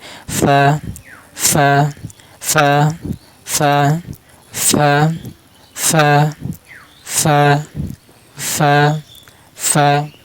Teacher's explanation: ফার মাকরাজ জিহ্বার আগা নিচের ঠোঁটের পেট, মানে নিচের ঠোঁটের পেটের মধ্যখানে, নিচের ঠোঁটের মধ্যখানে জিহ্বার সামনে উপরে দুই দাঁতের আগাটা নিচের ঠোঁটের পেটের মধ্যখানে লাগিয়ে উচ্চারণ করবেন।